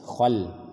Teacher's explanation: yang tebal adalah kha, la ditipiskan khal. Khalfihim, wa min khalfihim, dan ingat bukan khol, bukan langsung bersambung dengan la, dimonyongkan atau ditebalkan, bukan ditebalkan seperti kha, tapi ketika masuk ke lam khal, la kembali tipis. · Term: lam tipis